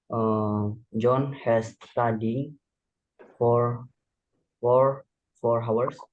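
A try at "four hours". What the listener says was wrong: 4 hours. Jadi H-nya nggak usah dibaca ya. 4 hours.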